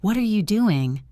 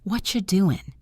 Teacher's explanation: She noticed how they link words together, like what are you doing becomes what you doing. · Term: connected speech